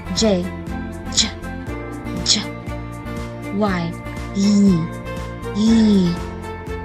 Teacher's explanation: mapapansin mo na ang iyong dulong dila ay dumidiin sa matigas na ngala-ngala